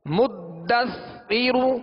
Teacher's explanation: دال حروف قلقلہ میں سے مشدد ہے، لہذا خوب جماؤں کے ساتھ، اور سا کو نرمی کے ساتھ پڑھیں گے. مدثر، اس کو مدثر نہیں پڑھیں گے، مدثر، مدثر.